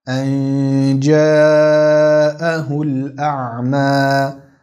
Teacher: Das erste ist der Ikhfa des Nuns beim Jim. Die Zungenmitte nähert sich dem Gaumen.